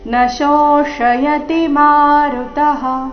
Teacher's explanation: ಯಂತರ ಅರ್ಧನ ಕ್ಲೇದಯನ್ ಮುಂದೆ ತ್ಯಾಪೋ ನಚೈನಂ ಕ್ಲೇದಯಂತ್ಯಾಪೋ ನ ಶೋಷಯತಿ ಮಾರುತಃ ನಶೋಷಯತಿ ಈ ಶಬ್ದದಲ್ಲಿ ಮೊದಲು ತಾಲವ್ಯ ಶ ನಂತರ ಮೂರ್ಧನ್ಯಾಶ ಬಂದಿದೆ